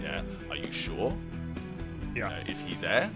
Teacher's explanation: The unsure tone, that's what we call the second tone, a yes/no question.